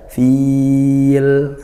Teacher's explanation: panjangnya boleh satu boleh dua boleh tiga Alif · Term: Mad aridukun